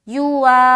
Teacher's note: یو کا نہیں کھینچ رہے، وا کو کھینچ رہے